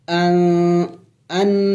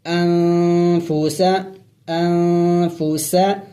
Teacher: اخفا کہتے ہیں ناک میں آواز چھپانا، یعنی ہم نے اس نون کی آواز کو چھپانا ہوگا ناک میں